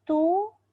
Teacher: Kita cuba sebut tu, moncong bibir kita sebab baris depan. Tapi pangkal lidah kita terangkat tak? Tidak sama sekali. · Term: Ta tu tetap nipis